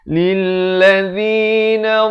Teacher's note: Thumma qila lilladzi, lil bukan lil, beza lil dengan lil. Lam baris kasrah bunyi li, bukan bunyi le ya.